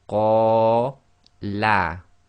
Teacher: So we have the fatha alif taking place, the long vowel, which is qa, which is two long, and then the la, which is one long.